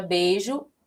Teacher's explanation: E o I, que tem um som mais fraco, vai ser a chamada semivogal